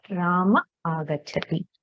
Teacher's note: So here Ramaha agachati. The visarga elides and we get Rama agachati. So this is an example of lopa.